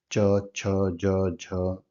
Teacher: च वर्ग के जो व्यंजन होंगे वोह तालू से उच्चारण होते हैं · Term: तालव्य वर्ण